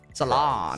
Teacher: The emphasis on the second syllable, as in the salon.